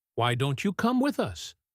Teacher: our voice usually goes up at the end because it is a question